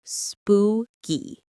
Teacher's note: The stress is on the first syllable. Spoo. Say it with me.